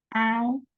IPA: aʊ